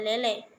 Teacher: bunyi agak tinggi, yaitu bunyi yang dihasilkan dengan cara posisi lidah meninggi sehingga agak mendekati langit-langit keras. Caranya, rahang atas agak merapat ke rahang atas, misalnya E pada lele.